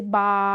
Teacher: اس کو ہم کھینچ کے پڑھتے ہیں، اس کو ہم کھڑی زبر جتنا لمبا کرتے ہیں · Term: الف مدہ